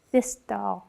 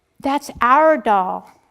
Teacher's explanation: My tongue is pulled forward and I produce that D like a dental D. I produce it behind my teeth. · My tongue is pulled back by the R and I produce a more retroflex like D.